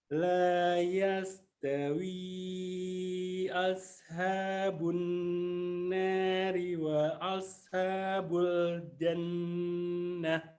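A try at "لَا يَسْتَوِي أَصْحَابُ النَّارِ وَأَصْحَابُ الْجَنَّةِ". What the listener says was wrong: Masya Allah, sudah bagus. Tinggal sodnya kurang tebal.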